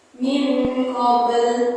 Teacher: Kenapa disebut qalqalah sughra? Karena ada huruf qalqalah berada di tengah kalimat. Dibaca memantul. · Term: qalqalah sugra